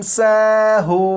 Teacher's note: یہ ہے سین، سین کو سختی سے پڑھا جاتا ہے یعنی سیٹی کی آواز کے ساتھ۔ یہ ہے ہا، ہا کو حلق کے نیچے والے حصے سے ادا کرتے ہیں، اور جب ہا کو پڑھیں گے تو آواز ذرا بھاری ہو۔